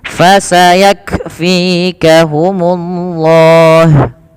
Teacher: Maka ketika melafalkan kaf sukun, yaitu huruf kafnya yang pertama ditahan dulu ditahan dulu suaranya, baru alirkan nafas. Fasayak, bukan fasayak langsung, tapi tahan dulu nafas suaranya, baru lepaskan nafasnya.